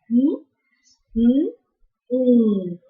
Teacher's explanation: Mm is bilabial nasal